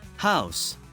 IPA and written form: haʊs (house)